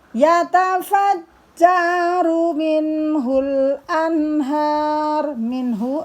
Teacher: Yatafajjaru minhul anhar. Minhu, nun mati bertemu ha, dibaca jelas idhar